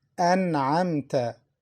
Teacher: Listen to the Noon, An'amta. Noon is pronounced clearly. Why? Because it's followed by Ayn, one of the throat letters.